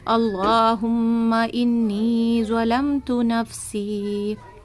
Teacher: ظلمتو پر کرنے کے لیے آپ ہونٹوں کو تھوڑا سا گول کریں گے اس کی ادائیگی میں۔